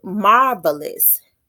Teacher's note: Dactyl is made up of three syllables. The first syllable is stressed in dactyl.